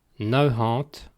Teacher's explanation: Partout en Vante, le mot kant subit la mutation spirante après le nombre nav.